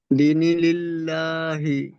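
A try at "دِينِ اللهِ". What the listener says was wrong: দিনিল্লাহি বলছেন, দাল ইয়াজের দি একালিপ টান হবে, ইয়া মাদ্দা, ইয়া সেকেন্ডে ডান দিকে জের থাকলে তাকে ইয়া মাদ্দা বলে। সবক নাম্বার 7-এ পড়েছিলাম।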